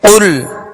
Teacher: قاف پر پڑھیں گے اس لیے کہ یہ حروف مستعلیہ میں سے ہے، اور لام کا جو سکون ہے، جزم ہے، اس میں جنبش پیدا نہ ہو، ال۔